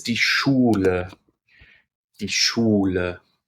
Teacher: SCH is pronounced almost the same as SH in English, but more air will escape from your lips when you say SCH in German.